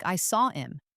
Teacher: words that start with H, like him or her, can lose their H when connected to the word before them.